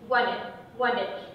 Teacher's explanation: Rồi, có thêm một điểm các bạn cần phải lưu ý cho cô là âm d trong từ wanted, wanted. Âm d ở kết thúc từ đó sẽ là âm d stop, tức là không wanted, not really wanted, wanted, wanted.